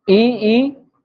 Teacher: और ये जो ई और उ है, ये आप मुख को ज्यादा बिना खोले लगभग लगभग मुख बंद होता है, तब भी आप ई का उच्चारण कर सकते हो। बोल के देखिए, पूरा बंद नहीं करना है, ऐसे बंद कर दोगे तो नहीं, उच्चारण नहीं होगा। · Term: समवृत्त